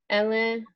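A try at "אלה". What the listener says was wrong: And again, you're going Ella. It's Ele. Yeah, most Hebrew words, the accent's always on the last syllable, but there are some where that's not the case, and I'm pretty sure that's the case with Ele. I think it's on the first syllable. So it's Ele, not Ele.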